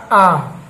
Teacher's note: विवृत है इसका मतलब होता है मुख का पूर्ण खुलना, मुख का पूर्ण खुलना जिसमें आपका हो जाएगा आ, ये स्वर आपका जो है ये विवृत के अंतर्गत आता है।